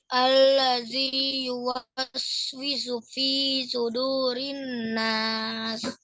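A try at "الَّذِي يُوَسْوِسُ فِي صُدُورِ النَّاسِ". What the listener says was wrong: Nunnya ditahan lagi, ulang lagi.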